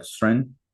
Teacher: the O drops out, so it's like instead of Soren, it's like Sren